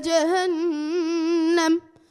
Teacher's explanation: keep your ghunnas consistent. So, Rabbana srif anna was short, and Jahannam was done properly.